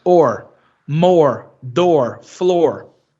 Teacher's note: No sotaque African American, geralmente esse R não é o retroflexo. Ele, na verdade, ele, como é um sotaque não rótico, né, não tem esse R lá bem produzido, ele sai e o som de O, ele vai ser ditongado para O.